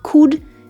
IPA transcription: kʊd